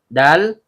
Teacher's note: Dal ujung lidah bertemu dengan pangkal gigi seri atas